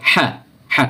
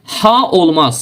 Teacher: Amma bizdə olan bax bu he ki var, hə yəni hərfi fərqli tələffüz olunur. Yəni bu hərf boğazın ortasından, boğazın ortası sıxılmaqla tələffiz olunur